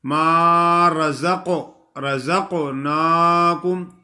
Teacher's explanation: قاف کو موٹا بھی کرنا ہے اور قلقلہ بھی ادا کرنا ہے